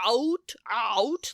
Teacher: diphthong there's a second sound in there you say it wrong you say out out like you start so low